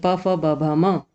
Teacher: ओष्ठ में दोनों ओठों के स्पर्श से बोलते हैं, यानी उ और प वर्ग यानी प, फ, ब, भ, म, ये सभी वर्ण ओष्ठ में आते हैं।